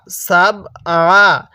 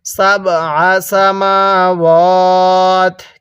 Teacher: আইনটা গলার মধ্যে চাপ দিয়ে পড়ব